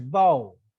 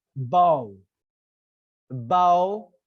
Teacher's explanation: You don't hear the other sounds clearly, but you hear the sound ba clearly because you would find the stress on ba. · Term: stressed syllable